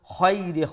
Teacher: খা ফুল মাউথ যেটা মুঠা করে উচ্চারণ করব